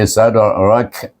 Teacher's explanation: sad, bertemu dengan huruf dal, itu adalah huruf qalqalah. Kita baca dengan qalqalah sughra.